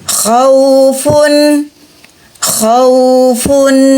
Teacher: wau sukun bunyinya u di huruf wau ada rohwah berarti mengalir